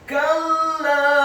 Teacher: Kata kalla, huruf kafnya dibaca tipis fathah satu harokat, huruf lam alifnya ditasydidkan dibaca tipis fathah 4-6 harokat. Ingat, bukan 2 harokat tetapi 4-6 harokat.